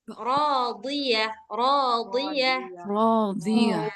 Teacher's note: tetap tebal walaupun barisnya baris kasrah karena dia punya sifat itbaq. Radiah radiah radiah ya punya sifat itbaq dan istil sama-sama berat.